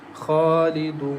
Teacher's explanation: change Nun Fatha to Sakin and stretch the sound for four or for six counts as Khalidun.